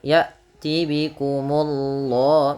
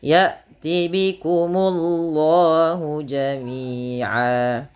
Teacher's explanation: Kemudian Allahnya tebal, ya tibikumullah, munya tipis baru Allahnya tebal.